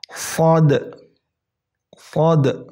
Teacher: kalian rasakan tepi lidah kalian itu menyentuh gigi geraham atas. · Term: huruf shad